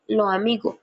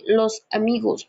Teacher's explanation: en algunas zonas de la costa Caribe, muchas personas dicen lo amigo, mientras que en otras regiones se dice los amigos, pronunciando la S completa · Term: el sonido de la S